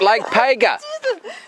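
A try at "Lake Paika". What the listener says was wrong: That's not like Pega. It's like P-A-I-K.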